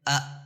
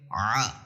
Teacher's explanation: ان دونوں کی آواز میں فرق یہ ہے کہ حمزہ حلق کے انتہا سے ادا ہوتا ہے، یعنی یہ سینے کی طرف جو حلق ہے یہاں سے حمزہ ادا ہوتا ہے، اور عین حلق کے درمیان سے ادا ہوتا ہے۔ ان میں فرق کرنے کے لیے عین کو آپ کو صحیح مخرج سے، اس کے مخرج سے ادا کرنا پڑے گا، تو ان دونوں کے درمیان آپس میں فرق ہو جائے گا۔